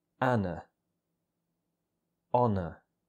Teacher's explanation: Anna and honor both end in a schwa vowel sound, so they both have exactly the same ending.